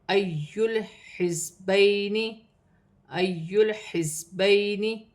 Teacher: یا ساکن سے پہلے زبر ہے تو یا لین بنے گی، اسے کھینچا نہیں جائے گا